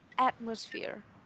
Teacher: Mình sẽ có từ là atmosphere. Trọng âm nhấn vào âm đầu tiên